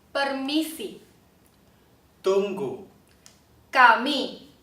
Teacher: so the p t k that we just heard are all unaspirated. There should be no air coming out